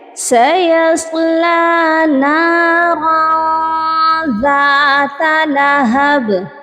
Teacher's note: نَارًا یہاں پر دیکھیے تنوین ہے اور تنوین کے بعد ذال ہے، اور ذال حروف اخفا میں ہے، اسی لیے نَارًا تنوین کی آواز کو ہم نے ناک میں چھپا کر پڑھا ہے، یعنی ہم نے یہاں پر ہڈن غنہ کیا ہے، چھپا ہوا غنہ کیا ہے.